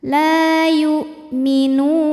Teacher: Mad tabi'inya adalah waw sukun didahului harokat dhammah, kemudian huruf yang disukunkannya adalah huruf nun. Maka ini kalau berhenti boleh dipanjangin nunnya 2, 4 atau 6 harokat asal konsisten dalam sekali bacaan. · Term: mad arid li sukun